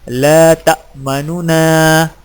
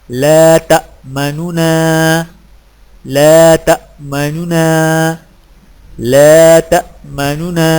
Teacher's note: 2 نونوں سے پڑھیں، لیکن پہلے نون کی پیش کو جلدی سے پڑھیں، یعنی اس طرح لا تأمنونا۔